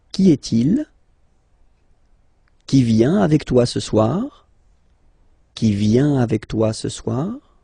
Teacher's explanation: If you pronounce them normally, remember that you will have to raise your voice a little bit at the end of the question